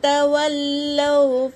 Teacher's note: تا حرکت، واو حرکت، لام پر تشدید ہے، اسے 2 بار پڑھیں گے۔